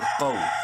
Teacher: منہ بھر کے پڑھتے ہوئے قاف کو شارٹلی پڑھیں گے واولین کی وجہ سے